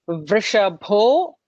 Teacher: vrishabho with a bho with a mahaprana there